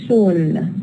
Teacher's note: you feel the O is a bit longer in soon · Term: lengthened